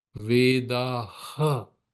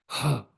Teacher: You're pushing the air out. It's called the Visarga.